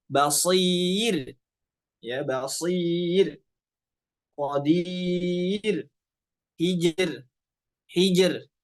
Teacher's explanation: ra sukun sebelumnya kasrah, maka ini pun dibaca tipis ra-nya.